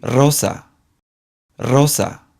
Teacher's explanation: The strong sound has a rolled R sound, much like the stereotypical R Spanish sound that we would expect, and it's always the first letter of a word.